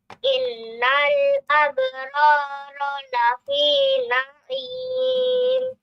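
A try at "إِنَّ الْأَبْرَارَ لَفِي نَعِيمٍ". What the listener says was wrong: Sudah bagus, nunnya kurang panjang sedikit gunahnya. Innal abrara lafi na'im.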